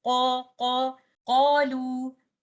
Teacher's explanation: the alif mad, which is coming after letter qaf, is also read with tafkhim because the letter which is preceded by alif mad is an isti'ala letter.